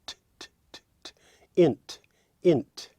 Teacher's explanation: Now we have the unvoiced plosive t